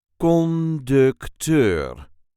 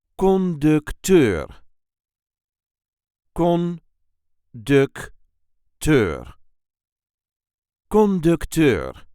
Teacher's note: There is a light emphasis on the last syllable.